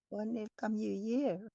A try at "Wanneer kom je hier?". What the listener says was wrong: Wanneer kom bukan kam. Wanneer kom je hier? Kom ya. Kom je hier.